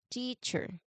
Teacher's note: The first syllable is teach, that is stressed. Teacher. It's loud, long, and clear.